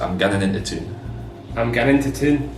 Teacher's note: So it should flow with no glottal stops